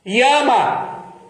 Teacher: Isso aqui não é o hiato, não é Ia. Não são duas vogais